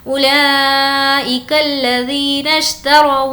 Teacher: واو کو لام سے ملائیں گے